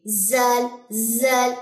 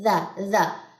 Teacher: بہت نرم ادا کرنا، اس کو کبھی بھی اس میں سیٹی کی آواز نہیں آنی چاہیے، زال زال نہیں، ذا ذا۔ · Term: ذال